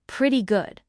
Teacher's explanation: Notice how the T sounds almost like a soft D in American English. We call this a flap t.